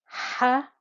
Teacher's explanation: Now this is a deep, not deep, this is a breathy ha. It comes from the middle of the throat And because there is an alif after the fatha, we get the 2 count stretch.